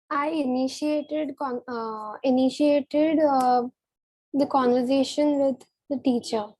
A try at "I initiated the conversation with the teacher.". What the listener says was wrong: Okay, very good.